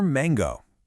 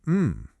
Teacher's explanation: When you say m, you can actually feel your nose hum a little bit. It's what we call a nasal sound.